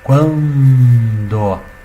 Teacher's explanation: Tu tem um ditongo crescente nasal, tá, gente?